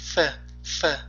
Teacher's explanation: Oldingi ikki ustki tish va ostki labning tashqi tarafi. Demak, tepa tishimiz, pastki labimizni biroz noti tishlagandek boʻlamiz. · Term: F harfi